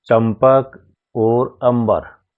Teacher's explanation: है अंबर में अनुस्वार के बाद ब का प्रयोग हुआ है प और ब दोनों प वर्ग के हैं अतः यहां पर अनुस्वार का उच्चारण प वर्ग के पांचवे वर्ण म के अनुसार होगा यानी म होगा अनुस्वार के बाद में आइए अब हम अनुनासिक